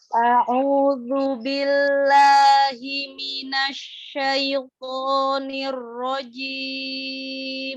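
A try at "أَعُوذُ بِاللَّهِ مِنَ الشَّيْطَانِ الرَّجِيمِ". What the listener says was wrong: Ya, huruf ain berdomah. A'udzu. Disempurnakan. Dan a'udzu.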